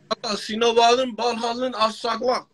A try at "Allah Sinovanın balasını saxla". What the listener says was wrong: Balasını asla yox, saxla. At saxlama, balasını saxla.